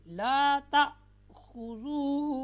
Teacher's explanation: हमज़ा साकिना को हमेशा हम झटका देकर पढ़ेंगे